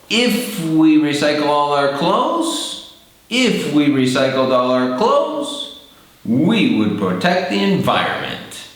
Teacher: the first part we go up and then the second part where you go down we conclude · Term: intonation